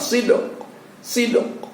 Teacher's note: Ya, suara koknya itu hampir nyaris tidak terdengar, yang terdengar sid. Qalqalah di sini pada ujungnya itu kita simpan atau nyaris tidak terdengar, kita munculkan di dalam rongga mulut kita.